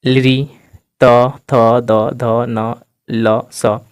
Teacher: ध न ल स यानी ये सब जितने भी वर्ण है इसको बोलने पर हमारी जीभ कहां सट रही है दांत दांत से सट रही है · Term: दंत वर्ण, दंत्य वर्ण